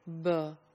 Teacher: non native speakers of English do not really make this distinction they would pronounce the per sound without the aspiration and in that case it'll sound more like BER